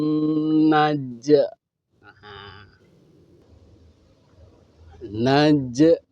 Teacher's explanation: tanda matinya itu harus jelas berbunyi namanya Qalqalah